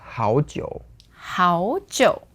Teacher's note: Hao jiu, second tone, third tone.